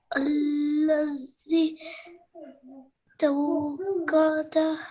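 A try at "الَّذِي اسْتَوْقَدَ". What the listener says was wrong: So can you see the scene has the skoon sound on top, skoon sign on top of it? That means that you have to join it to the letter before.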